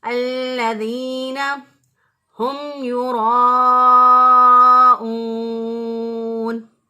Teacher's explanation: یعنی گلے کا وہ حصہ جو سینے کی طرف ہوتا ہے وہاں سے ہا ادا ہوگا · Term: اقصی حلق